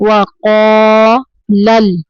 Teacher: لام کو حرکت نہیں دینی، لل نہیں پڑھنا